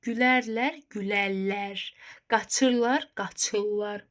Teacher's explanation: Üçüncü şəxsin cəmində bu şəkilçilər var, ırla ar şəkilçiləri. Bunların samiti qoşallığı kimi tələffüz olunur. Gülərlər olacaq gülmək kök, ər, qrammatiklər sonluq, qaç, ırlar.